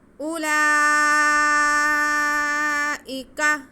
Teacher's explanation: حمزہ کے بعد واو ہے، لیکن واو جو ہے یہاں پہ سائلنٹ ہے۔ اگر واو پہ ساکن ہوتا تو یہ واو مدہ ہوتی، لیکن یہ واو سائلنٹ ہے۔